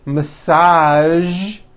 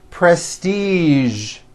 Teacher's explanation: there are only a few words that have the voiced zh sound at the end